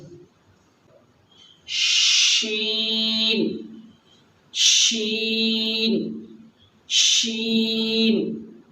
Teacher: اس میں تھوڑی آواز پھیلے گی، شے کی آواز آئے گی، ایس اور ایچ، شے، شلگم والی شے کی آواز آئے گی، شین شین شین۔